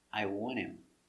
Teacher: The T is silent when you have NT together.